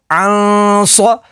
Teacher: صاد زبر صا عن صا، نون ساکن کے بعد صاد ہے، صاد حروف اخفا میں سے ہے تو یہاں پر اخفا ہوگا یعنی غنہ کر کے پڑھیں گے